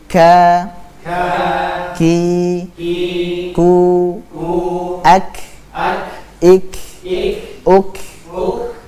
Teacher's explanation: jangan diqolqolahkan ya bukan Ak Ik UK tapi ak nafas yang mengalir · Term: sifat hams